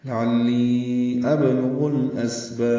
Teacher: با کو لمبا کریں گے اور با ساکن پہ وقفاً قلقلہ کریں گے ، لعلی ابلغ الاسباب، ملانا ہو تو پھر قلقلہ نہیں ہوتا،